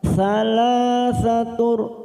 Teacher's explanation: duma tanwin bertemu ro, namanya idgham bila gunnah, hanya masuk tanpa mendengung